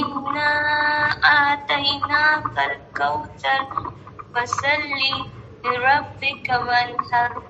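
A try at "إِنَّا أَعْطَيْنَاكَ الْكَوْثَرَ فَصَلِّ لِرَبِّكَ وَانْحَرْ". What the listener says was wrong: بغیر رکے پڑھیں، ایسے رک کے نہ پڑھیں. فصلی لربک ایسے رک کے نہ پڑھیں، ملا کر پڑھیں. فصلی لربک.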